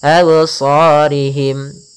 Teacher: Kemudian pada lafal sha ada bacaan mad tabi'i, yaitu adanya fathah bertemu alif, 2 harakat